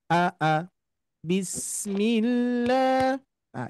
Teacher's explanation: Mad panjang dua harakat itu sama dengan dua huruf hijaiah ya atau misalkan dua ketuk huruf hijaiyah